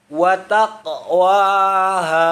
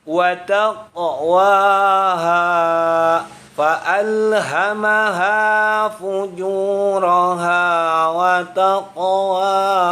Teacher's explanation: ketika huruf qalqalahnya mati di tengah-tengah kalimat, itu disebut dengan qalqalah sughra dan dibaca memantul.